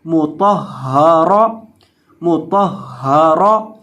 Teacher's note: را کے اوپر زبر ہے، را کو موٹا کر کے پڑھیں گے